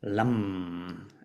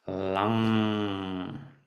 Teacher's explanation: Lam, or maybe a bit better pronounced lang. So you put the tongue at the top of the roof in the end, and you don't close the mouth for the M. So the M could be an NG in English.